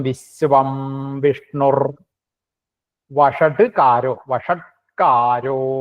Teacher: വിഷ്ണു എന്നുള്ളത് വിസർഗം എന്നും കൂടി ആയിട്ട് വിഷ്ണുർ എന്നാവുകയാണ്